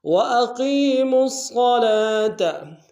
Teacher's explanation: میم کو صاد کے سامنے لیں گے، صاد کو بشد ہے، زور دیں گے. صاد کو موٹا ادا کریں گے، لام کے اوپر کھڑا زبر ہے، ایک اندر میں کھینچیں گے.